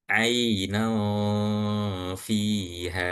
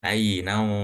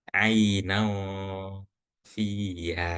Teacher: Maka contoh di sini karena ini ikhfanya itu karena nun sukun bertemu fa, maka maka ee kita ketika dengung mendengungkan nun yang samar ini, itu mulut seperti ancang-ancang mau mengucapkan huruf fa